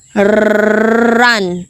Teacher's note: In the R sound, the front part of the tongue may be retroflexed.